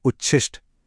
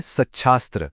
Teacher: यहाँ एक नहीं बल्कि दोनों अक्षर बदल जाते हैं। जब त या द का सामना श से होता है तो त तो बदलता है च में और श बदल जाता है छ में। ये एक तरह का टीम वर्क है, दोनों मिलकर एक नई साउंड बनाते हैं। · देखा, त का च हो गया और श का छ हो गया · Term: डबल ट्रांसफॉर्मेशन